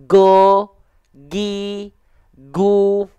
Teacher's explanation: Kalau teman-teman tekan di bagian di ujung tenggorokannya terlalu kuat jadinya go, gi, gu. Jadinya seperti huruf G.